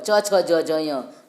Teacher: ये तालु का जीभ स्पर्श करती है तब इनका उच्चारण होता है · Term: च वर्ग